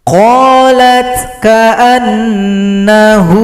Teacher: waw disukunkan, ha dipanjangkan 2 ketukan.